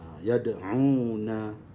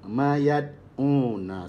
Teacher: Mesti ada letusan de, ya de, tapi tak kuat, ya. Kecil. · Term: qalqalah surah